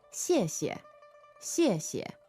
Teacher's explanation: you can hear how the first syllable has a stronger xie to it, right? And the second one is neutral. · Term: neutral tone